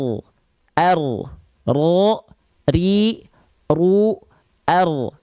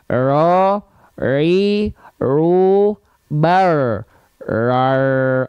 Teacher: bukan getarannya hilang, getarannya ada, tapi tidak terlampau banyak dengan dengan getaran yang tetap dia nggak terlalu banyak tapi tetap tegas, lugas, jelas, kedengeran mana getarannya, nggak sama, nggak jadi hilang ro, nggak gitu, tapi ro, ri, ru, r. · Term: getaran huruf ro